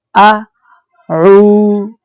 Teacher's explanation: یہ جو عین ہے اس کی آواز حلق سے آئے گی۔ عین کے ساتھ واو ہے، واو جزم والی، اس لیے ہم عین کو 2 حرکات کی مقدار لمبا کریں گے۔